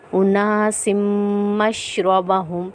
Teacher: قد علم كل أناس مشربهم، اور میم پہ ہم اس میم پہ ہم غنہ کریں گے کیونکہ میم مشدد حالت میں ہے